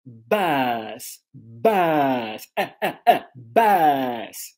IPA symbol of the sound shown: bʌs